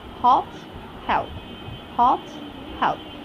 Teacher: While you alter hot and help, we clearly find the presence of the phoneme h, and the phoneme h never makes our vocal cord go vibrant